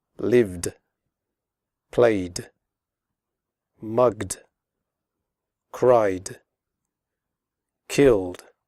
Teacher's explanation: After voiced sounds such as v, g, and y, and all vowel sounds, the final ed is pronounced like d, as in the word good. Again, the e is silent.